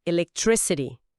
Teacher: Não é ti. E também o tr em trick, que tem aquele som enroladinho do inglês americano